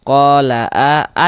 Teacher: A dibaca panjang, mad badal panjang 2 harokat.